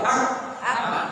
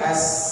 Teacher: Tapi uniknya kaf ini, dia mengalir nafas, hams, tapi dia tidak mengalir suara, syiddah, tertahan suara. Nah, jadi kalau kita baca ak, udah tertahan suara, coba ak, kan nggak bisa suara lagi, ak, kan nggak bisa suara lagi.